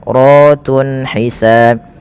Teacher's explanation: dibaca dengan tafkhim karena ra-nya dibaca berharakat fathah, maka dia dibaca dengan tebal.